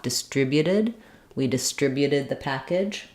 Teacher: a y and an U but distribute second syllable and distributed change your final t for a flap